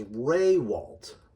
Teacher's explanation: The real way we say it is Raywalt. The emphasis is on the first syllable, not the second. And we pretend there's an invisible Y there.